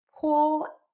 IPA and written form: ˈpuwɫ (POOL)